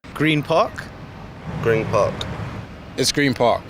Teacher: when one word ends an N sound and the next word begins in a P sound, it changes to an M sound as your mouth gets ready to pronounce the next sound. Green Park becomes Green Park.